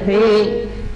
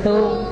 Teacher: জিহ্বার আগা থেকে পাতলা ভাবে উচ্চারণ হবে